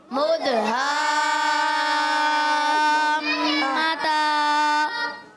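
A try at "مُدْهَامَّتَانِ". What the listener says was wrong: आपने मता जल्दी कर दिया। मता खींचेंगे एक अलिफ, क्या करेंगे? एक अलिफ खींचेंगे। ता पर खड़ा ज़बर है ना, खड़ा ज़बर जो होता है वो एक अलिफ खींचा जाता है।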